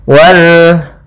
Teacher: Ini alif lam qamariyah, lamnya terbaca